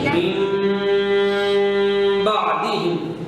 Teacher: نون ساکن کے بعد اگر با آ جائے نا تو اوپر چھوٹی سی میم خود لے آتے ہیں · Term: اقلاب